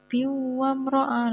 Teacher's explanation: Ada tanwin bertemu dengan huruf wawu. Jadinya dibaca idgham bihunnah, berdengung, lebih berdengung memasukkan gitu.